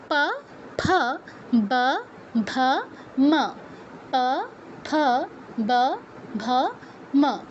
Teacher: উষ্ঠ আর অধর মিলে এদের উচ্চারণ করতে হয়। দাঁতের কিন্তু কোনো কাজ নেই প বর্গের অক্ষর উচ্চারণের ক্ষেত্রে। খেয়াল রাখতে হবে দাঁতের কাজ যেন না লেগে যায়।